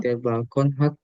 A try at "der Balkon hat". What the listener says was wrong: bukan balkon, tapi ang balkong.